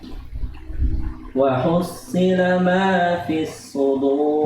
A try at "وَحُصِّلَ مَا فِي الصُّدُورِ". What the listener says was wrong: Ya, agak dinaik lagi pangkal lidahnya, istilahnya. Wahus. Jadi ada sifatnya yang bukan hanya istilah, tapi itbaq, melekat. Di pangkal lidahnya nempel. Naik pangkal lidahnya, bagian belakang lidahnya, kemudian tempelkan di langit-langit. Wahusila itu yang bikin tebal, ya. Nah, ya, udah naik pangkalnya, udah naik, cuman hanya sedikit lagi pangkal dilekatkan atau itbaq, ditempel, ya.